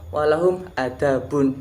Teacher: huruf ainnya diganti menjadi Alif